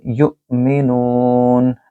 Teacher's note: نو کو لمبا کریں کیونکہ یہاں واو مد ہے